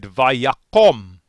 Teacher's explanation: as a result of the accent rescinding or moving back that last syllable becomes closed and unaccented and so the kamats becomes the kamatsukatan and we say vayakum